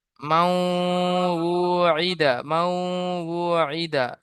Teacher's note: নুন সাকিনের পরে ইউমিনের চারটি অক্ষরের মধ্য থেকে ওয়াও এসেছে, তাই নুন সাকিনকে ওয়াও এর সাথে মিলিয়ে এক আলি পরিমাণ গুণাহ করে পড়তে হবে। ওয়াইয়ের উপরে তাসদিদ এসছে, তাসদিদ ওয়ালা অক্ষরকে দুবার পড়তে হয়, একবার ডান দিকের অক্ষরের সাথে মিলিয়ে, একবার নিজে নিজে।